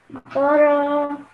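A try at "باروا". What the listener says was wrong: ba and how long ba ro. You know, you need to practice also to prolong it a bit, the alif madda, the alif. To prolong, you need You need to practice alif madda to give it... The alif needs to be given 2 seconds, okay? And fatha should be only given one second.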